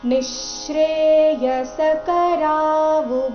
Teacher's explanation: ನಿಶ್ರೇಯ ನಿ ನಂತರ ಇರೋ ವಿಸರ್ಗದ ಉಚ್ಚಾರಣೆ ಅರ್ಧಶ ರೀತಿ ಬರಬೇಕು